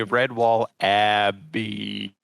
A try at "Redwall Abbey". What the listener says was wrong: No. It's just Abby. No need to prolong.